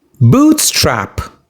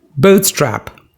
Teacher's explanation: You stress the first syllable boot.